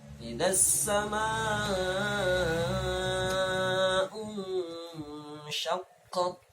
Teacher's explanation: maka membaca mad wajib muttasilnya adalah 2,5 alif